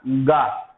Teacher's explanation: जब आप गा बोलते हैं दोस्तों, आपके कंठ में एक कंपन होता है, आपके गले में एक कंपन होता है। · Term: घोष वर्ण